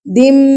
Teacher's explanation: ابھی آپ لوگ گنہ کرنا سیکھیے. دم، دیکھیے میں نون کی آواز کو ناک میں لے کی ہوں. دم، اس کو گنہ کرنا کہتے ہیں.